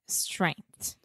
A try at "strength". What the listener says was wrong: Strength. TH at the end there.